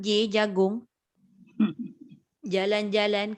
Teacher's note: Kita boleh sebut jim dengan J tu betul-betul tak ada angin.